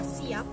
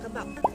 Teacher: bibir atas dan bibir bawah terkatup rapat sehingga udara dari paru-paru tertahan untuk sementara waktu sebelum katupan itu dilepaskan kembali. Contohnya up atau wah pada kata siap dan beh pada kata kebab. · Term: konsonan hambat bilabial